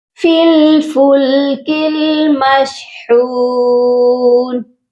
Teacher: فا کو لام کے ساتھ ملائیں گے، درمیان میں الف اور یا کو ہم نہیں پڑھیں گے، اور کاف کو بھی اگلی لام کے ساتھ ملائیں گے، اس کے درمیان میں بھی الف ہے، خالی الف ہے، اس کو ہم چھوڑ دیں گے۔